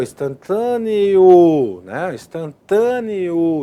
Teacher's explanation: Nós temos o ditongo crescente, ele cresce, né? Na pronúncia, a vogal E nesse ditongo é menor, né? Tem um som mais para baixo e a vogal O tem um som mais para cima.